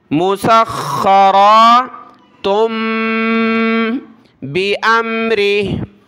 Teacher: یہ تو سخا, یہاں بھی سخا, صرف را کھڑا زبر را ہے. مسخرا, تنوین ہے دو پیش کی, اس کے بعد با ہے تو چھوٹی میم آ گئی, تا کو چھوٹی میم کے ساتھ ملایا.